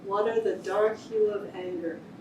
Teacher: Where are the strongest syllables? The first syllable of water, right?